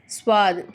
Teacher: ஸ்வாத் சொல்லும்போது லைட்டா ஒரு விசில் சவுண்ட் மாதிரி வரும்